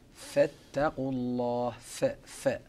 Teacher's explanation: فحرف الفاء يخرج من بطن الشفة السفلى مع مشاركة أطراف الثنايا العليا ، ويتصف بصفات ضعيفة كلها، وهذه الصفات تصل إلى 5 صفات